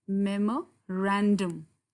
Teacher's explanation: Look at the stress where it falls. It falls here on this syllable, ran.